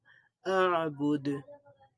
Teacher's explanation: দালের মধ্যে আমরা কলকলা করব, একটু ধাক্কা দিয়ে পড়ব,